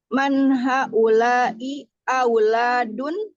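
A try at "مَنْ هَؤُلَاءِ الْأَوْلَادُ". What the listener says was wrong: Man haula'il auladu. Auladu. Bidun tanwin. Bidun tanwin limada li'anna hadza mawjud alif lam.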